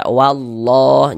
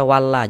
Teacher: Maka lafaz Allahnya dibaca tebal, dibaca tabkhim. Huruf lam yang di tengah nih, huruf lam jalalahnya tuh kita baca tebal.